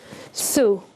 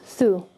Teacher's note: Here, the Thaa has a Damma on top, so it's going to be pronounced as Thu. So literally just a very short oo, Thu. And you want to round your mouth when you're making the sound of Damma.